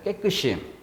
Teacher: 얘가 분명히 이로 난다는 것은 깨끗이 이렇게 소리가 나는 경우예요. 앞말의 받침이 뒤로 넘어가서 시 이렇게.